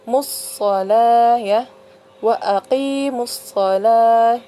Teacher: Karena alif lam bertemu dengan salah satu huruf syamsiyah yaitu huruf shad ya, so. Jadi alif lamnya itu tidak dibaca atau melebur ya. Jadi langsung masuk ke dalam huruf so bacanya. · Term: alif lam syamsiyah